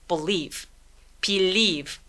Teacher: 요거 맨 마지막에 오는 이 발음은 묵음 처리되죠? 강세는 이음절에 주니까 맨 첫 번째 b 부분은 굉장히 애매하게 작게 소리 내주세요.